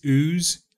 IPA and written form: uːz (WHOSE)